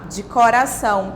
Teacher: O som que é nasalizado é apenas o A, de coração. Então, eu só preciso colocar o tio em cima do A, apenas em cima do A.